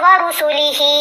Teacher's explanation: ہم نے اس ہا کو 3 الف کی مقدار جتنا لمبا کیا